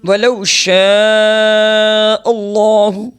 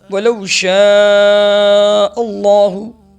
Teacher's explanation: یہ مد متصل ہے اور اس کو 4 سے 5 الف کے برابر کھینچ کر لمبا کر کے پڑھیں گے